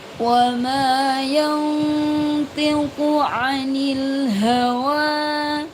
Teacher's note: ada nun sukun bertemu dengan tho dibaca ikhfa samar-samar.